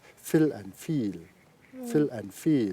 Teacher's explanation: So in fill, the vowel is shorter. In feel, the vowel is longer. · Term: vowel length